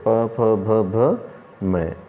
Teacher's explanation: हम दोनों औष्ठों को बिना मिलाए जो प है वो नहीं बोल सकते, पवर्ग को नहीं बोल सकते।